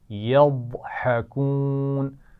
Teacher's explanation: یضحکون ضاد کے مخرج کا خیال رکھنا ہے اور اس کی آواز موٹی ہوگی، یضحکون، اور اس کے فون بعد ہا ہے جس کی آواز باریک ہے، تو اس کا خیال رکھتے ہوئے ایک دفعہ پھر پڑھتے ہیں۔